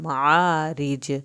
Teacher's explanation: रा पतला भी पढ़ा जाएगा और जीम का कलकला भी किया जाएगा